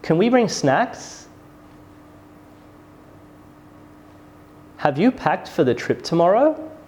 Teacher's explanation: for these questions your voice rises and it rises on the very final content words · our voice goes up at the end of yes no questions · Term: rising tone